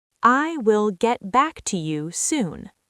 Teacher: The T in get is often a stop T. You don't release the air before the B in back.